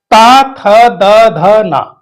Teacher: इनको उच्चरित करते समय हमारी जीवा का जो अग्र भाग है वो दांतों का स्पर्श करता है